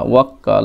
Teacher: এই কাফের উপর তাসদিদ রয়েছে এইজন্য ওয়াও এবং একটি কাফ ইদগাম হবে হ্যাঁ আর একটি কাফ নিজে জবরের সঙ্গে উচ্চারিত হবে